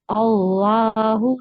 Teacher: जलाला में जो लाम है मोटा रखेंगे